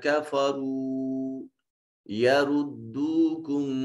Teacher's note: را مضموم ہونے کی وجہ سے مفخم ادا ہوگا۔ یہ بھی را مضموم ہے تو اس کو مفخم پڑھیں گے موٹا کر کے۔